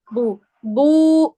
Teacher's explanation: اسی طرح سے ضمہ ایک چھوٹا سا واو ہوتا ہے، مینس کہ یہ کہ اگر واو میں वाव मद्दा में हम 2 काउंट्स खींचते हैं, एक काउंट को कम कर दे तो एक काउंट बचेगा। आपने दम्मा यानी कि पेश को इसी तरह से पढ़ना है, बा पेश बू, बू खींच के नहीं पढ़ना